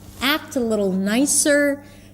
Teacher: act has the as in cat, drop your jaw, pull the lips to the sides a bit. Act a little lower in pitch, nicer.